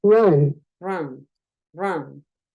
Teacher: la u es entre una o y una a